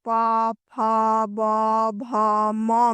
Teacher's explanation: प वर्ग यानी प, फ, ब, भ, म में हवा ओष्ठ को स्पर्श करते हुए निकलती है। इसीलिए इसे स्पर्श व्यंजन कहा गया है।